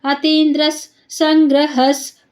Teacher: ದ್ರ ಮುಂದೆ ವಿಸರ್ಗ, ವಿಸರ್ಗದ ಮುಂದೆ ಸ, ಅದಕ್ಕೆ ಅರ್ಧ ಸ ಆಯ್ತು. ಅತೀಂದ್ರಸ್ ಸಂಗ್ರಹಸ್ ಹ ಮುಂದೆ ವಿಸರ್ಗ ಇದೆ, ವಿಸರ್ಗದ ಮುಂದೆ ಸ ಇದೆ, ಅರ್ಧ ಸ.